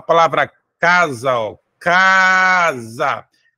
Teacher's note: sendo que a sílaba mais forte está na penúltima, está no K, e ela é uma palavra paroxítona.